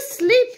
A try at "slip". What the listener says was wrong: If you say sleep, this is sleeping. Look. Sleep. It's sleeping. That's sleep. And slip is here.